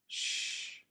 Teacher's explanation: Instead of the thin sound made with the letter S, the lips are more rounded and more air comes over the blade of the tongue to create this sound sh. The tip of the tongue can be in the same position as for the S, either up behind the gum ridge or behind the lower front teeth.